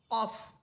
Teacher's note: কফ জিহ্বার গোড়া তার বরাবর উপরের তালুর সাথে লাগবে কফ এবং আকার ছাড়া যেহেতু মোটা হরফ আকার ছাড়া পড়তে হবে